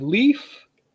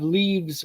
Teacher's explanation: Leaves, plural, it becomes a V. The F and the V sound almost identical.